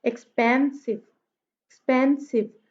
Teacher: पेन पे जो है वो स्ट्रेस है